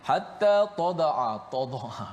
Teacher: jangan kita tebalkan ta itu